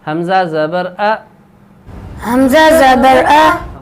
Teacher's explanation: حمزہ کی آواز باریک ہوگی